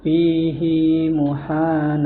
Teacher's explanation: Huruf ha dipanjangkan dua harakat